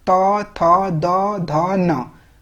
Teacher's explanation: जब आप उच्चारण करेंगे तो आपका जो जीभ है वो दांत से टच करेगा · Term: दंत वर्ण